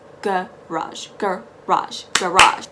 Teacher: word garage remember it's not garage it's not garage it's garage the g is very soft it's very gentle and um the emphasis is on the go